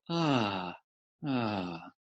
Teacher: the second sound is ah where you just open the mouth a little more